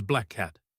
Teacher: I don't release the K sound twice. I just hold the K sound for a tiny bit longer, like a bridge, and then I release into the second word. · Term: gemination